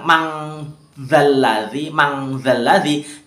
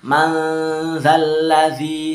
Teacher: cara membacanya ini dia 50-50. Jadi dia setengah-setengah. N dan eng-nya itu setengah-setengah. Atau itu seimbang. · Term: ausat